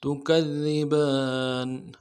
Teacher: ہے، زور دیں گے، اگلے دال کو باریک ادا کریں گے، با کے اوپر کھڑا زبر ہے، ایک الف مدار میں کھینچیں گے ، نون کو نرم سے ادا کریں گے، تکذبان فبأي آلاء